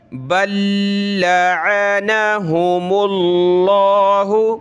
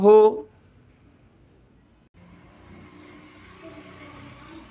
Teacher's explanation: لفظ اللہ کے بارے میں رول کئی ویڈیو میں بتا چکا ہوں کہ یہ لفظ اللہ ہے، اس سے پہلے زبر اور پیش آ جائے تو اس کو ہم نے موٹا کرنا ہوتا ہے۔ یہاں میم پہ دیکھیں پیش ہے تو یہاں لفظ اللہ کو ہم موٹا کریں گے